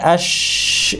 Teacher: এখানে জিহ্বার যে জায়গাটা ব্যবহার হচ্ছে সেটা জিহ্বার মাঝখান সেটা আমি যদি আঙ্গুল দিয়ে দেখাই এই জায়গাটা আশ এই আর